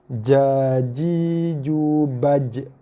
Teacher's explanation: Jim kena sentuh, bukan setakat sentuh, tapi kena tekan pada langit tengah. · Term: huruf jim